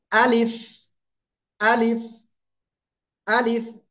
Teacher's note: আলিফ মুখের খালি জায়গা থেকে অক্ষরটা উচ্চারিত হয়